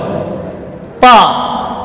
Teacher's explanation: Posisi lidahnya itbaq, ya, ujungnya di pangkal gigi seri atas, bagian punggung lidah menempel ke langit-langit atas, dan ini huruf yang paling kuat.